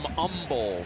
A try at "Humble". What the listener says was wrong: No hate. No H. They don't hate.